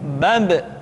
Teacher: Ketika mati, maka terdengar suara pantulan. Bab. Kesalahan sering terjadi, seringkali ba lupa untuk dipantulkan suaranya.